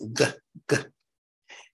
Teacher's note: They are the hard G as in girl, coming from the back of the throat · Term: gutturals